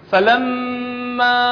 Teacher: الميم المشددة لازم نعطيها غنة بمقدار حركتين